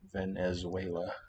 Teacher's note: the accent is still on the zue syllable